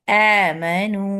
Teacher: حمزہ deepest part of throat سے نکلتا ہے، اس کو آمنو نہیں پڑھنا ہے، اندر سے نکلتا ہے.